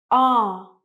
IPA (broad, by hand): ɑ: